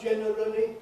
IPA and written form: ˈʤenərəli (generally)